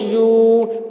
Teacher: بیما، یا واو پیش یو، واو ساکن سے پہلے پیش ہے، واو مدہ ہوا، اس لیے واو مدہ کو ایک الف کے برابر کھینچ کر پڑھیں گے